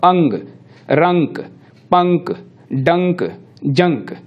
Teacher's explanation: उच्चारण के संदर्भ में अगर इसमें बात की जाए तो ये अनुस्वार जो है, इसके लिए जरूरी है कि वायु नाक से निकले, क्योंकि जब हम बोलते हैं तो मुंह से भी वायु निकलती है और नाक से भी निकलती है। अनुस्वार में जो भी वर्ण आएगा उसको हम बोलेंगे तो नाक से वायु अनिवार्य तौर पर निकलेगी